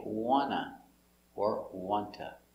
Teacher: You can make both T's silent and say wanna or wanta.